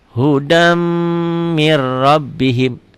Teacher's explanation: Hudam agak sedikit dengung dan ditahan. Ini idgham bi gunnah.